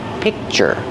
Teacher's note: So it's like you don't hear the K, but the position is there. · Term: stop sound